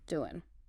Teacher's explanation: often we'll shorten ing endings to n.